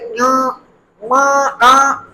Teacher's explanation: इसका उच्चारण स्थान नासिका है अर्थात नाक है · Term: नास वर्ण